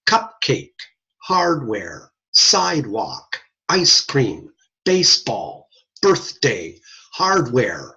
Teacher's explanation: Those are words that have 2 little words in them. They're 2 syllables, even emphasis on both syllables. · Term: SPONDEE words